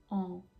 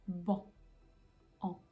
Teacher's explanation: on va commencer par faire le son A, que vous savez très bien faire, A, et on va ajouter l'air du nez. Donc on commence par A et on ajoute l'air et ça nous donnera le son AN.